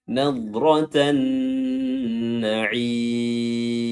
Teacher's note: Ya, namun karena dia huruf nun, lam ketemu nun di posisi seperti ini, namanya alif lam syamsiyah. Jadi lamnya tidak disebutkan dan langsung melebur ke huruf nun